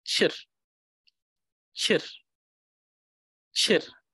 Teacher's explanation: make sure that the r sound doesn't become the rolling sound like r. It becomes r, chir, and not chir. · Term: rolling r